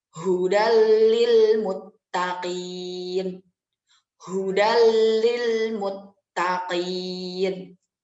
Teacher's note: Menurut istilah, jika terdapat nun mati ataupun tanwin bertemu dengan salah satu huruf idgham bila guna, maka huruf nun mati tersebut dileburkan tanpa dengung. Nah, huruf idgham bila guna itu ada 2, yaitu lam dan juga ro. · Jadi tanpa disertai dengung dan juga dileburkan.